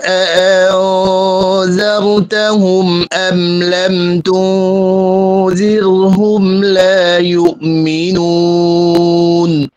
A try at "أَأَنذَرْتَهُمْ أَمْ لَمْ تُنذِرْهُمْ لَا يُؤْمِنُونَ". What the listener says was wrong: আপনার যে গুন্নাটা হবে আমলাম তুন, দাল পাতলা করলে গুন্না পাতলা হবে, কিন্তু গুন্না মোটা করে ফেলেছেন, আমলাম তো এরকম করে ফেলেছেন। আর এটা হচ্ছে কলকরা করে ফেলেছেন, জিরো এবং কলকরা করে ফেলেছেন, কলকরা করা যাবে না, যেটা খুব খেয়াল রাখবেন, ঠিক আছে?